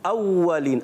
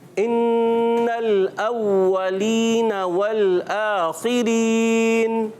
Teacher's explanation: वाव पर तशदीद आ गई, फिर वाव की अदायगी होगी होंठों की गोलाई से, और ज़रा रुक कर